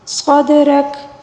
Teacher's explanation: دال کے اوپر ساکن ہے، اس کو قلقلے کے ساتھ پڑھنا ہوگا، اور را کے اوپر زبر ہے، اس کو پر پڑھیں گے، ٹھیک ہے۔